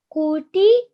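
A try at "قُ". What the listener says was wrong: A little bit rounder, a little bit thicker on the qaf. Qu. Quti.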